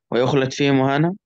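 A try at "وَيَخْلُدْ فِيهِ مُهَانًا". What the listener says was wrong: يخلد، هي مش يخلد، هي يخلد مش مضموم الاول.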